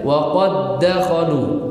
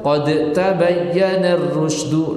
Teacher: Tapi ini ada dal bertemu dengan huruf yang satu makharij berbeda sebagian sifat maka hukumnya idgham. Idgham itu memasukkan dal ke huruf ta.